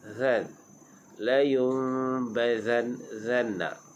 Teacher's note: Layun, dengung, kita bukakan sikit bibir. Bazanna, zan huruf zal pastikan jangan bunyi z, jangan bunyi macam lebah. Yani zal kita keluarkan hujung lidah.